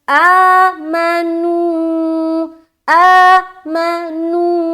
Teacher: حمزہ کو ہم کھینچ رہے کیونکہ کھڑا زبر ہے, اور نو کو بھی ہم کھینچ رہے کیونکہ واو مدہ ہے, واو ساکن اس سے پہلے پیش آ گیا.